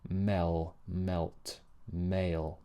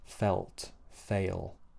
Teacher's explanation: the dark L, along with having the tip of the tongue touching the top of the mouth, just like in the light L, the other L, the back of the tongue is raised as well. It's not touching, but it's higher and it's closing off the space in the back of the mouth.